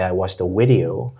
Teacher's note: you mixed up your V and W sounds a little bit